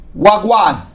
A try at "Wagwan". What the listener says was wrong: Slow it down. No, slow down the wa. Wagwan.